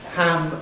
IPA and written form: ham (ham)